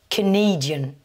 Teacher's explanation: dans Canadian, la nationalité, vous commencez par le son schwa pour le premier A.